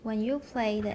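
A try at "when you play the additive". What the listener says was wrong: you 不要放重音.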